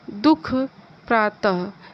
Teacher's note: जिसका उच्चारण हल्की श्वास छोड़कर किया जाए उसे विसर्ग कहते हैं।